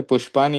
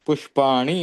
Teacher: क्योंकि र और श जहाँ पर होते हैं, ये मूर्धन्य श जो है, वहां पर मूर्धन्य श होने के कारण न का अणा हो जाता है संस्कृत में। र हो, हलंत र हो या हलंत श हो, ये र श दो के लिए, जब दो शब्द के भीतर र और श होता है तो न की जगह ऋण बन जाता है।